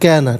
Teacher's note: کانا میں جو کاف ہے اس کو باریک پڑھیں گے، قانا نہیں کینا.